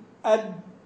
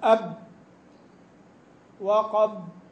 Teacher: يعني لو تجد الصوت راكد، يعني مش راكد، راكد بالدال، محصور، تقول أد أو تقول مثلا أب وقد، تجد الصوت ينحصر تماما ويحصل ضيق شديد في المخرج